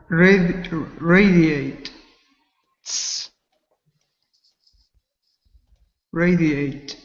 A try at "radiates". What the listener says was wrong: Close. Try to make sure you get that S sound. Radiates. Radiates.